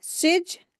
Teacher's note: जीम के ऊपर शद्द है तो जीम को 2 मर्तबा पढ़ेंगे